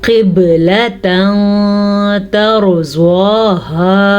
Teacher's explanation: ये मोटी क़ाफ है और बा पे साकिन है तो बा पे झटका करना लाजमी है